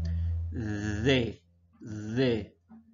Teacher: hacemos un sonido vibrante que deja pasar un poco de aire